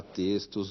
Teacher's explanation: Na palavra textos, o X se pronuncia como S.